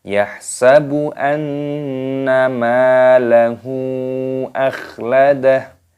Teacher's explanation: Hanya sukun maka dibaca yahsabu anna. Nun tasdid hukumnya dibaca gunnah berdengung.